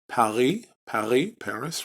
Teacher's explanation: for some speakers they use a parisian type of uh pronunciation in the back of the throat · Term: Parisian type of pronunciation